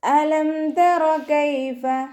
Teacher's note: ഹംസ അഖ്സൽ ഹൽക്കിൽ നിന്നാണ് വരുന്നത്. സൗണ്ടിനെ വ്യക്തമാക്കി കൊടുക്കുക.